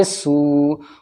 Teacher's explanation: سین واو پہ سو، واو ساکن سے پہلے سین کے اوپر پیش ہے، واو مد ہوگا یعنی واو کھینچے گا